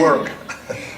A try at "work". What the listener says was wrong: You definitely roll those R's.